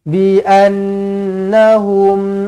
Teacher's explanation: Dzalika bi annahum, nun sabdu wajibul gunnah dengungkan 2 harakat.